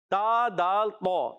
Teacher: تا کا مخرج جو ہے زبان کا سرا اوپر کے دانتوں کی جڑیں